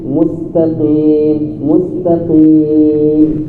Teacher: Walaupun salah satu daripada huruf isti'la tebal, tapi qaf di sini ketebalannya berkurang.